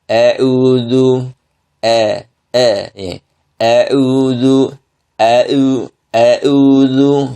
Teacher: Hamzahnya dibaca dengan imalah. Seharusnya hamzah itu dibaca dengan harokat fathah sempurna